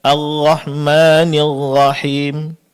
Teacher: ro ya tidak lagi terdengar murni seperti huruf roh, akan tetapi sudah mirip dengan huruf ghain. · Di saat melafalkan huruf ra-nya kedengaran ya seperti mirip dengan huruf ghain, khususnya ketika bertasydid.